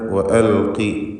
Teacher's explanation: ഖാഫിന് കുറഞ്ഞ തഫ്ഖീമാണ് കൊടുക്കേണ്ടത്. കസ്റായതുകൊണ്ട് ഇസ്തിഅലാഇൻ്റെ 7 അക്ഷരങ്ങളിൽ പെട്ടതാണ് ഖാഫ്, തഫ്ഖീം ചെയ്യണം.